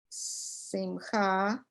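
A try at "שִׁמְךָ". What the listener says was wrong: Sh- Shimcha. I thought you said simcha, but it's shimcha, that's all.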